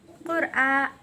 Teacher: Qur'a bacaan mad badal sebab a dibaca panjang